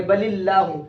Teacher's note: اللہ کے لام کو موٹا کر کے نہیں پڑھیں گے بلکہ باریک کر کے پڑھیں گے